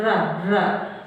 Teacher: और इसी को जो रा है इसी को कहते हैं प्रकंपित ध्वनि, मतलब रा जब बोल रहे हैं तो प्रकंप हो रहा है, कंप उत्पन्न हो रहा है, रा रा, तो इसीलिए इसको प्रकंपित ध्वनि भी कहा जाता है।